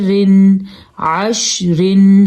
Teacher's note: ہم نے را کو باریک پڑھنا ہے کیونکہ را کے نیچے دو زیر ہیں